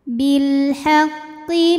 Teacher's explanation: lam qamariah karena alif lam menghadapi huruf qamariah yaitu ha maka lam sukun dibaca jelas atau biasa disebut dengan izhar qomari